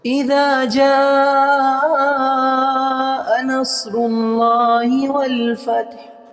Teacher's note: اذا جا کا جو مد ہے وہ 5 الف کی مقدار میں کھینچیں گے